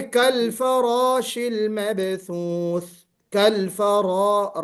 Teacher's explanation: را کو پر پڑھیں گے، فراشل نہیں پڑھیں گے